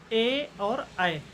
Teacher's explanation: कंठ तालु के अंतर्गत आपका आता है ए और ऐ